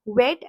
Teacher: Um so when you say the sound of we, you bite your lower lip. And in the case of W, there is no biting of the lip. There is a rounding of your mouth. You form a slight O when you say it.